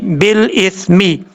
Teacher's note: با کو جب لام سے ملائیں گے تو بیچ میں جو الف ہے اس کو چھوڑ دیں گے، اس کو لمبا کرنے کی ضرورت نہیں ہے